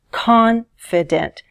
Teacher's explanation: Which syllable is stressed in the word confident? Confident. The first one is stressed, right?